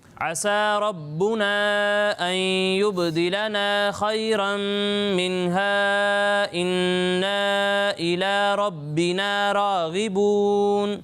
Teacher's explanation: جہاں مد منفصل ہے اسے 2 یا 2.5 الف کے برابر کھینچیں گے، اور جہاں حروف مدہ ہیں انہیں ایک الف کے برابر